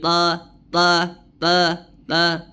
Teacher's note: huruf tho tebal ya karena dia memiliki sifat apa istilla dengan itidbaq ya istilla dengan itbaq sehingga suara atau bunyi hurufnya tebal